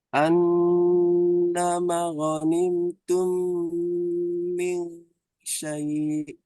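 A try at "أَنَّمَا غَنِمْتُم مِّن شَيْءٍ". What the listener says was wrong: Namanya kependekan. Dibaca pendek nih. Kalau ada alif sebelumnya kata itu mat. Mat yang dua harokat. Mat tobi'i. An-nama. Ah, ma panjang.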